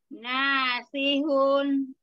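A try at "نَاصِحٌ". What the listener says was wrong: Tapi jangan dihun. Gitu jangan dipanjangin, Mi. Kalau panjangin hun, itu enggak balik ya. Nasihun. Un. Yang tutup dong.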